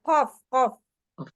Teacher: bagian pangkal lidah bagian atas bertemu dengan langit-langit